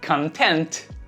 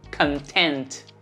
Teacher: Contente, satisfeito, tem a tônica na segunda sílaba.